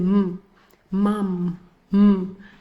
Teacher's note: this is the sound that you pronounce when your lips are closed and you're allowing just the air or the sound to escape through your nose